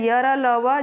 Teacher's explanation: इनके उच्चारण में जीभ मुख के किसी विशेष भाग के निकट तो आती है, किंतु उसे स्पर्श नहीं करती है। हाँ, इसमें क्या है, य र ल व जो मुख के किसी विशेष भाग के निकट तो आती है लेकिन स्पर्श नहीं करती, उसे हम अंतस्थ व्यंजन कहते हैं।